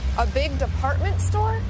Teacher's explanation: raising her voice at the end of a sentence to make sure she understood about the department store